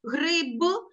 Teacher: гриб ми конкретно чуємо буковку п